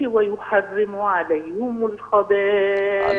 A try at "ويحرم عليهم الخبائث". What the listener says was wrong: عليهم، اكسر الهاء، ويحرم. يعني خلصي كسرة الهاء، ويحرم عليهم. عليهم